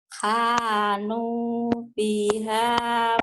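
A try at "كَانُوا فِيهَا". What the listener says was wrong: Bukan hanu. Bukan hanu tapi kanu.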